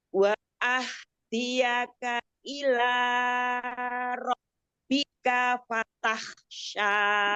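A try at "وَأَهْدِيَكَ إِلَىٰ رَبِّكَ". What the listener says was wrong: 2 harokat aja, matobi'i, ilanya. Ila ro, ila ro.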